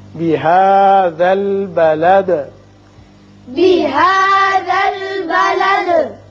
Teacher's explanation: یہاں وصل کی صورت میں آپ دال کے نیچے زیر پڑیں گی بلدی وانت، لیکن جب آپ وقت کرنا چاہیں چونکہ آیت ہے تو دال ساکن ہو جائے گی اور ساکن ہونے کے ساتھ ساتھ اس کی صفت قلقلہ بھی ادا ہوگی